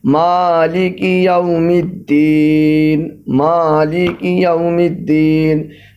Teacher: ماں کو آپ کھینچ کے پڑھیں گے، اس پر کھڑا زبر لگا ہوا ہے، اس کو کھینچ کے پڑھیں گے